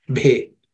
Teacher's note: this bhe, which is also aspirated with extra air, it happens to be the fourth letter in the pa vargo, pa class of consonants.